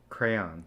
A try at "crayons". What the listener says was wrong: There's a O. There's a O, my guy. Why are you not saying the O?